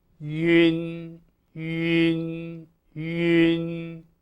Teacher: U umlaut N, which is simply a rounded lips version of yin